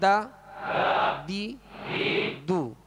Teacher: اگر ضاد کو باریک پڑھ دیا تو دال محسوس ہوتی ہے، اگر دال کو پر کر دیا تو یہ ضاد محسوس ہوگا، ورنہ اس کا مخرج بھی الگ ہے اور ان کی خوبیاں بھی الگ الگ ہیں. تو دال کو ادا کرتے ہوئے باریک پڑھیں گے